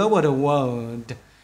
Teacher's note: các bạn đọc nói vào nhau luôn